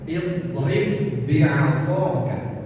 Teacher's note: ketika ba yang pertama sukun dan ba yang kedua berharakat, maka hukumnya adalah idgham, memasukkan ba yang pertama kepada ba yang kedua